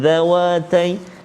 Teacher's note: Jannataini, kemudian dhawatai, huruf dzal hati-hati keluar ujung lidah di antara gigi kaki atas dan bawah.